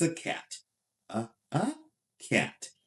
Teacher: But in English, sometimes the vowel is relaxed. When the vowel is relaxed, that is called the schwa. And to say the schwa, I need you to first of all relax your mouth, keep it small and natural, and say schwa, uh, schwa.